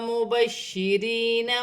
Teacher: شین مشدد ہے، جماؤں کے ساتھ ادا کیا جائے گا۔ مبشرین، یا ساکن سے پہلے زیر ہے یا مدہ بنے گی۔